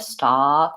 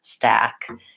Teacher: more of an ah sound stock with your tongue back and what you want is your tongue to be more forward